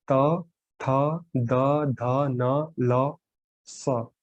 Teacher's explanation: तो इन व्यंजनों का उच्चारण किससे हो रहा है? दांतों से हो रहा है।